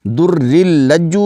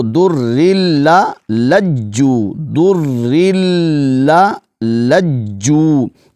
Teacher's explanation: را کو لام کے ساتھ ملائیں گے، لام کو خوب جماؤ کے ساتھ ادا کریں گے، اور دوسرا لام جو ہے اس پر زبر ہے اور اس کو آگے ہم نے جو ہے جیم کے ساتھ ملانا ہے۔